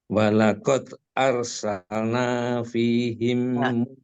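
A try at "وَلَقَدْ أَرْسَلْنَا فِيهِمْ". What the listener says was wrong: Salna itu terlalu cepat, Pak. Salna, jadi harusnya satu-satu saja langkahnya. itu Bapak cepat barusan. Ada percepatan.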